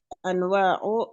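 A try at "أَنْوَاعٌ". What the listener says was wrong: Tanwin, Om. Anwa'un. Tanwin.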